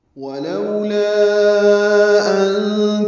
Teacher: لا میں الف مدہ ہے اور اس کے بعد حمزہ آنے کی وجہ سے مد منفصل بنی ہے. 4 حرکات ہم لمبا کرتے ہیں.